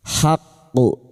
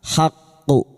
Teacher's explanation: Huruf qaf yang bertasdid dan dibaca waqaf qalqalah kubra masuk pada huruf qaf dan kita pantulkan dengan kuat